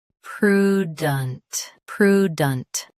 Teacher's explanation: Both US and UK have the same pronunciation of this word. Stress pru. Keep dent soft and quick. · Stress pru. Keep dunt soft and quick.